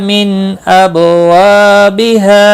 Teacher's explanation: واو مدہ ہے، ایک الف کے برابر کھینچ کر پڑھیں گے، نون ساکن کے بعد حرف حلقی میں سے حمزہ آیا ہے، اظہار حلقی ہوگا، غنہ نہیں کریں گے